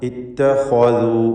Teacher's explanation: ഈ പദത്തിൽ ഖാ ഇസ്തിഅലാഹിൻ്റെ 7 അക്ഷരങ്ങളിൽപ്പെട്ട ഒന്നാണ്. സ്വരഭാരത്തോടെ അതിനെ ഉച്ചരിക്കുക. ഇത്തഖദു മറ്റക്ഷരങ്ങൾക്ക് തഫ്ഖീം വരാതെ ശ്രദ്ധിക്കുക.